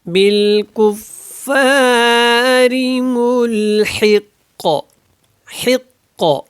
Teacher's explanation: ونخشى عذابك ان عذابك بالکفار ملحق، اور یہاں پہ قاف کے اوپر قلقلہ ہوگا اور اس کی دو پیش کو ہم ختم کر دیں گے، اور یہاں پہ فا کو آپ نے اچھے سے ادا کرنا ہے کیونکہ یہاں پہ شد ہے اور ری کو لمبا نہیں کرنا